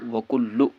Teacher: لام پر تشدید ہے تو اس میں سختی کے ساتھ پڑھنا ہے اور 2 بار پڑھنا ہے